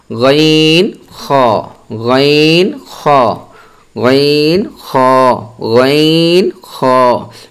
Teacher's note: হালকের শেষ ভাগ হইতে গাইন খ